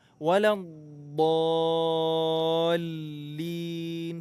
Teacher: Huruf dad di sini ada tasydid. Jadi tahan dulu.